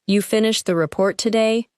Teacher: If the speaker says you finished the report today, the word today may be stressed because the timing is surprising.